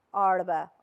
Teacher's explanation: The R in the Arabic, it's normal R, but in the Shehi dialect, you will hear them that they are sort of rolling up their tongue when they pronounce the R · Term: retroflex